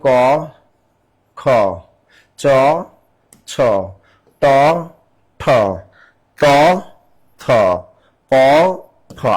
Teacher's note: তা আমরা জানি বর্গের 1 এবং 2 হলো অঘোষ ধ্বনি